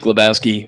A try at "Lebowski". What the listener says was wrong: Well, there's no W in that last name. It's just Lebowski. A little bit of a pronunciation there.